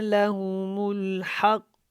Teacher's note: قاف کے اوپر قلقلہ بھی کیا کیونکہ قاف جو ہے موٹا بھی ہے